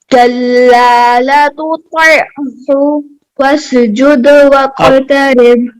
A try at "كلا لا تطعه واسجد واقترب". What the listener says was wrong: اب آپ نے دوسرے لا کو لمبا نہیں کیا. کلا لا تطیعہ واسجد واقترب.